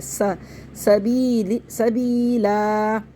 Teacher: ربه الى ربه, سا پڑھنا ہے, اس کو سو نہیں پڑھنا ہے, سو موٹا نہیں کرنا, بہت سے لوگ موٹا کر دیتے ہیں, اس کو سین پڑھنا ہے